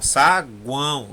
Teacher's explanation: saguão é nasal saguão o som sai pelo nariz